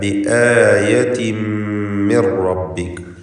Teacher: ആയത്തിൻ എന്ന ആ തൻവീനിനെ ശേഷമുള്ള മീമിൽ പൂർണ്ണമായും ലയിപ്പിച്ച് മണിക്കണം. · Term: ഇദ്ഗാം ബിഗുന്ന കാമിൽ